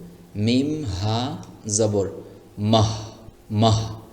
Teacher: এটাকে বলা হয় হায় হাওয়াজ। হায় হাওয়াজ এর উচ্চারণ মনে হবে যে পেটের ভিতর থেকে বাতাসটা বের হচ্ছে। কোথাও আটকে যাওয়া কোন ভাব আসবে না। কোথাও যদি আটকে যায় গলার মধ্যে তাহলে হাই হুত্তি হয়ে গেল।